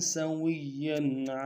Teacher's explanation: سین کی سیٹی باریک ہوگی، باریک ادا کریں گے. واو کو یا کے ساتھ ملانا ہے، یا کے اوپر تشدید زور دیں گے، اگلے یا کے اوپر تنوین ہے غنہ کریں گے.